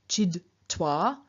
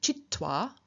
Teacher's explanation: So for example, in front of a T, a D will change into a T, so a D will change into a T. A voiced D will lose its voice and turn into voiceless T.